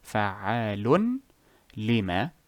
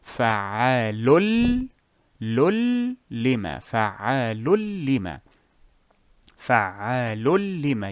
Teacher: You remove the noon phonetically, regardless if it is written or if it is in the tanween. You fuse the two letters together to have fa'alul idgham So this is for Edghaam. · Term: idgham without gunna